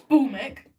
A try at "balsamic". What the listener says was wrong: It doesn't say balmic, it says balsamic.